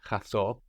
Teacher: When we get chaso, that n completely disappears.